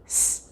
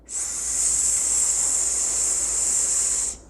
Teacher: S is unvoiced, and it is a continuous consonant, with the sound being able to be produced for a long period of time with no change in pronunciation for the duration of the sound. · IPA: /s/